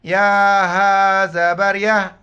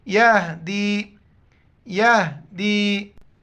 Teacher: ज़बर, वल्लाम खड़ा ज़बर ला, हा पेश ओ, वल्लाहु, वल्लाहु यहदी, हा को गले से अदा नहीं करना, जैसे मुंह से हवा निकालते इस तरह हा को अदा करना है